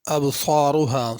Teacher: ابصارها صاد کو پر کر کے پڑھنا ہے، را کو بھی پر کر کے پڑھنا ہے۔